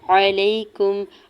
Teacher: یا ساکن سے پہلے لام کے اوپر زبر ہے، یا لین ہو رہا نرمی سے موڑتے ہوئے ادا کریں گے۔